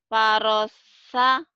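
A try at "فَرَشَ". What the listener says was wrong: Farosha. Shin. Farosha. Farosha. Sha. Farosha. Hutang shin ya. Jadi kalau orang Sunda mah ada ayam syh. Ada angin. Sha. Sha. Sha. Anginnya gede. Bibirnya dibuka lebar. Sha. Sha. Angin. Farosha. Farosha.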